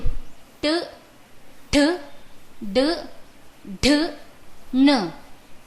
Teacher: व्यञ्जनेषु ट ठ ड ढ न तथा ऋ एवं ष एते वर्णाः मूर्धया उच्चार्यन्ते। अतः एते वर्णाः मूर्धन्याः इत्यपि कथ्यन्ते।